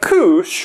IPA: kúʃ